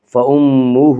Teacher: فَأُمُّهُ، ہا کے اوپر الٹا پیش ہے، الٹا پیش قائم مقام ہے وا مدہ کے، اس لیے الٹا پیش کو 1 الف کے برابر کھینچ کر پڑھیں گے۔